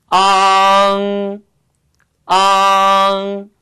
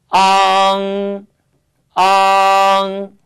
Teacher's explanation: 먼저 단음모 아를 발음하시면서 혀를 뒤쪽으로 수축시키시고 혀뿌리에 힘을 주면서 발음하시면 되겠습니다.